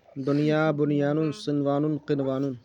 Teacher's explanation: یہ جو 4 کلمات ہیں نا، دنیا، بنیان، صنوان، قنوان، ان چاروں کلمات میں نون ساکن کے بعد حروف یرملون ایک کلمے میں آنے کی وجہ سے ادغام نہیں بلکہ اظہار مطلق ہوگا، اس لیے ان چاروں کلمات میں غنہ نہیں کریں گے